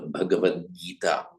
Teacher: So you have that's why it's the Bhagavat Gita, which by Sandhi, the final t followed by a voiced consonant g becomes a d